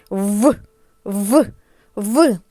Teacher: в чітко подивіться у люстерко верхні зуби зустрілися з нижньою губою відчуйте як зімкнулися зуби з губою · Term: звук в